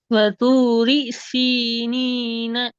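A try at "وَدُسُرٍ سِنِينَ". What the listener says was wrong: இடையில நிறுத்துறீங்க. வதூரி சவுண்ட் கம்மியாகுது.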